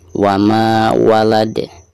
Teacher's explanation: ketika membaca wama di sini dihukumi mad tabi'i dan dipanjangkan 2 harokat karena ada fathah lalu berhadapan dengan alif ya.